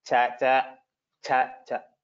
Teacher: Similarly in Somatyan and another sutra Cha Cha. So here the first Cha is Mahaprana, second is Alpaprana. So you need to clearly differentiate between the two.